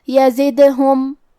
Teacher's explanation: کلمت یزدہم حرف الدال پہ جزم ہے، تو ہمیں دال کو قلقلہ سے پڑھنا ہے، اور قلقلہ کا معنی ہے حرف ساکن کو ہلانا، تو ہم یہ حرف کو ہلاتے ہوئے یہ کلمہ کو پڑھیں گے، یزدہم۔